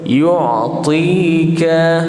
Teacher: ni matikan ain. Okay, jangan ada yang nipis sangat sampai bunyi hamzah.